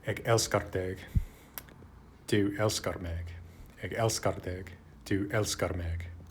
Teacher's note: the unstressed vowel in the second syllable of love has not become a schwa. It remains a, like in Icelandic, Faroese, and Swedish, unlike Danish and Norwegian bokmål, and that G is still pronounced in the sort of average dialect this is based on, rather than just becoming silent or becoming a glide after the vowel.